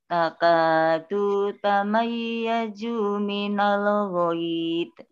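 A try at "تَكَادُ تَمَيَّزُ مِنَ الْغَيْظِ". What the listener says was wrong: Ulangi, du sama zu pendek. Takadu tamayyazu minal ghaid.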